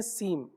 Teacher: سین میم نہیں پڑھیں گے، یعنی سین کے آخر میں جو نون کی آواز ہے وہ نہیں آئے گی، بلکہ سیم پڑھیں گے۔